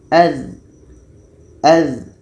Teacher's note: Dha ini letaknya pada ujung lidah menempel dengan ujung gigi seri atas. Ujung lidah menempel dengan ujung gigi seri atas.